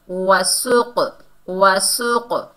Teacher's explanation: قلقلہ پیدا ہوگا یعنی ڈبل ساؤنڈ آئے گی